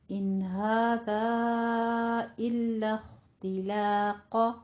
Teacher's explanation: ان هذا الا اختلاق، تلو کا نہیں کہنا ہے، لام کو باریک رکھیے، خو کو بھی پر پڑھنا ہے، قوف کو بھی پر پڑھنا ہے. الخ لخ، یہ لام باریک رہے گا، الخ نہیں کہنا آپ نے، ٹھیک ہے.